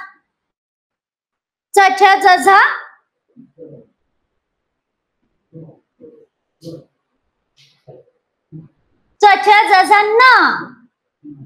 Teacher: जीभ आहे ना दाताच्या मागच्या टाळूला लावायचे